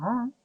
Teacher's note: la vocal baja, que es la a porque la lengua permanece en el piso de la boca